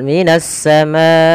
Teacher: Kemudian pada fal minasamaai di sini ada alif lam kita namakan dengan alif lam syamsiyah yaitu alif lam yang dia tertulis tapi tidak dibaca lamnya